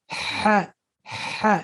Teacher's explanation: Ha, by your Adam's apple, right behind your Adam's apple. So kind of like your Adam's apple is kind of like constricting the sound.